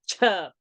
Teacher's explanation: Cha, if you aspirate out with more pressure, more air, it is cha.